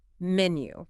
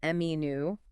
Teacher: You want to stress that first syllable, menu. Let the second syllable be a little softer, almost like an sound.